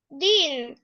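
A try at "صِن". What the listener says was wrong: না এটা তো দদ না সদ তাহলে কি হবে সিন হ্যাঁ সদ কাসরাতাইন সিন একটু ভারী করে সিন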